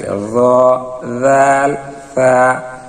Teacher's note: জিহ্বার আগা সামনের উপরের দুই দাতের আগার সঙ্গে লাগবে জাল জিহ্বাটা পাতলা হবে জিহ্বার আগার একটু ভিতরের অংশের সঙ্গে লাগবে